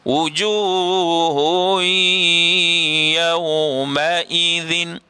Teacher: Asalnya wujuhun, tetapi dia tak bunyi hun, dia bunyi hui. Bunyi hui, dengung pula.